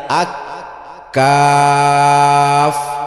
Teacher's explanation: 22 নম্বর মাখরাজ জিহ্বার গোড়া হইতে একটু আগে বাড়াইয়া, তার বরাবর উপরে তালুর সাথে লাগাইয়া আক কাফ উচ্চারিত হয়। কাফ পড়তে লম্বা টান ভুলবো না, অল্প টান হবে না।